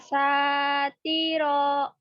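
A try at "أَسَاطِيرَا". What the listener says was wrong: T-nya panjang.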